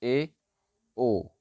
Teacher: जैसे ए और ओ, ये दो हमारे अर्धसंवृत स्वर हो जाते हैं। जब हम इनका उच्चारण करेंगे तो हमारा मुंह आधा बंद रहेगा